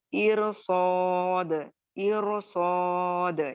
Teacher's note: را ساکن کے بعد صاد آ رہا ہے جو بھی موٹا ہے